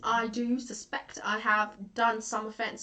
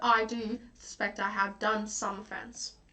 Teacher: the word do is emphasized by the iambic pentameter